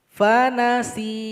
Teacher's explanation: Cara berhenti di sini huruf ya mesti kita sukunkan. Sehingganya sin yang kasroh mesti menjadi panjang 2 harokat.